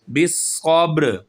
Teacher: وقف کریں گے تو یہ را کی جو زیر ہے یہ سائلنٹ ہو جائے گی، یہ ختم ہو جائے گی، ہم صرف اس کی آواز کو ظاہر کریں گے را کی، بالصبر۔